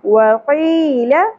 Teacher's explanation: یا ساکن حرف مد ہے ایک الف کے برابر کھینچنا ہے · ہا اقصی حلق سے، ذال نرمی سے